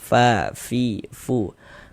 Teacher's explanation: Kalau kita mengucapkan huruf fa itu ada nafasnya mengalir, fa, fi, fu. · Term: sifat hamas